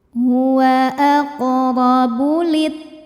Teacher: karena ada alif lam yang menghadapi huruf syamsiyah yaitu huruf ta. Nah, maka dibacanya dimasukkan ke ta langsung. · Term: alif lam syamsiyah